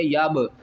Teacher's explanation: یا کو با سے ملائیں گے، با کے اوپر قلقلہ کریں گے